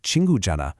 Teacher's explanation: The h sound, the he in Janna, it's silent.